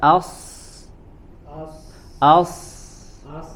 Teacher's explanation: huruf Sin ya as coba as nah sama seperti itu hanya ketika kita mengucapkan huruf Shad itu suara kita lebih khusus lagi ya lebih khusus lagi karena huruf Shad ini memiliki sifat tafkim ya sifat tebal